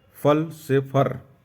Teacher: ल के स्थान पर र का प्रयोग होता है